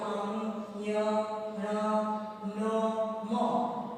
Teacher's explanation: यह नाक से बोले जाते हैं, इसको अनुनासिक कहते हैं